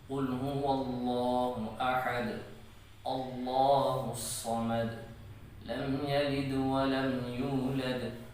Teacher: اور دوسری بات یہ ہے کہ دال جب ساکن ہو تو اس پر قلقلہ کیا جاتا ہے، یعنی ساکن ہونے کی حالت میں جب ہم دال کو ادا کریں گے تو ادائیگی کے وقت اس حرف کو ہم تھوڑا سا ہلائیں گے۔ جیسے سورۃ الاخلاص کو اگر پڑھ لیا جائے، جس کی ہر آیت کے آخری حرف جو ہے وہ ساکن ہونے کی حالت میں ہے اور اس پر قلقلہ کیا جا رہا ہے۔